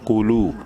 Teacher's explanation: قوف پیش قو، منہ بھر کے پڑھنا ہے قوف کو. لام واو پیش لو، واو مدہ ہے، لام کو ایک الف کے برابر لمبا کریں گے